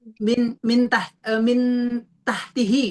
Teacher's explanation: ujung lidah turun sedikit dari makhrajnya nun set dikit aja itu namanya sudah ikhfa.